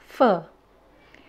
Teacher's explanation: labiodental sound, made using the lower lip and upper teeth, namely in the pronunciation of f.